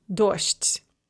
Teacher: So that soft de at the end is going to be pronounced as a te, and then it's going to devoice the zh as well, which will become a sh. So dojd becomes dosht.